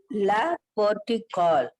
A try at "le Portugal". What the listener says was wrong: Portugal is fine, but L-E is pronounced as Le. Le.